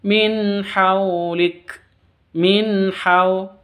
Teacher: non sukun bertemu dengan ha, jelas bacanya, non sukunnya jelas, haknya jelas, bacaan izhar halki.